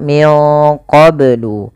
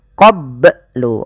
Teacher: Yang pertama tidak memantul, yang kedua tidak boleh menambahkan hamzah. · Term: qalqalah